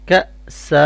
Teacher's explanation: اب یہاں پہ کیونکہ فتحتین ہے تو اسٹاپ ساؤنڈ میں ہم ایک فتحہ کو ریڈ کریں گے اور ایک فتحہ سائلنٹ ہو جائے گی، اور یہاں پہ الف پھر اسٹاپ ساؤنڈ میں پڑھا جائے گا، اس لیے اسٹاپ ساؤنڈ میں یہ الف مدہ ہوگا تو اس کو ہم لونگ کر کے اسٹاپ کریں گے